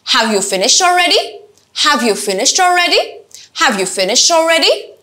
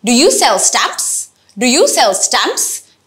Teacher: এখানে আমি যেহেতু এক শব্দের উত্তর জানতে চাই অথবা yes or no question তার জন্য শুরুতে লো পরে আস্তে আস্তে হাই।